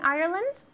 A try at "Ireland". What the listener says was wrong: A lot of cathedrals in Ireland. There are a lot of cathedrals in Ireland. Ireland. Ireland.